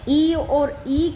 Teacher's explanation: ये तालव्य स्वर हैं, यानी हम इनको तालु से बोल रहे हैं